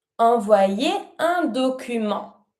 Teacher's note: And don't pronounce the T of document.